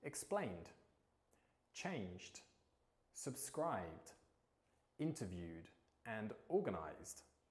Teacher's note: Now, unlike the id sound with ted and ded endings, with the d sound, it's a single syllable. · we use this d sound with voiced consonants. So anytime you can feel that vibration in your throat as you pronounce a consonant, this is where we would use the d sound ed ending.